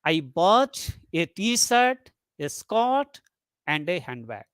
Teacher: list intonation falls on the last item to show that the list is finished · So first rise, t-shirt rise, a skirt rise, and a handbag, that is fall.